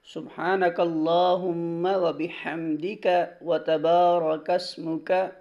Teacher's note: یہ کاف موٹا نہیں پڑھتے ہیں بلکہ زبان کی جڑ کو تالو کے سخت حصہ سے لگا کر ادا کریں گے اور کاف باریک ادا کریں گے۔